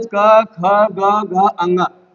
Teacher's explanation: इन सभी यानी टोटल क वर्गों का उच्चारण स्थान होता है दोस्तों कंठ